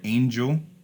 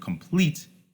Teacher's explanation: The word angel, the way that it is pronounced, the first syllable is stress, whereas the word complete, the way that that is pronounced, the second syllable is stress. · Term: stressed syllables